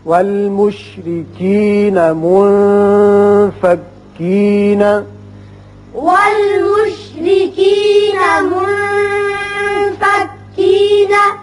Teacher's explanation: والمشركين منفكين. والمشرکین میں را کے نیچے زیر ہے اس لیے اس کو باریک پڑھیں گے · والمشرکین میں را کے نیچے زیر ہے اس لیے اس کو باریک پڑھیں گے. منفکین نون ساکن کے بعد فا جو کہ حروف اخفا میں سے ہے، لہذا یہاں اخفا کریں گے